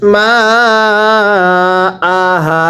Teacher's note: হামজা জবর আ টান দেওয়া যাবে না হা আলিফ জবর হা এক আলিফ টানতে হবে